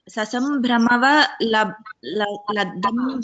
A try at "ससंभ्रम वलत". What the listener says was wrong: सो that you have to split that as ससंभ्रम वलत अंबरचर